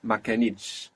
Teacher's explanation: we have the accent on the end there because of the consonant cluster, because of the two consonant sounds, t, sh, on the last syllable, pulling that accent onto the last syllable.